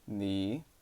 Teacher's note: same tone third tone which is lowering and Rising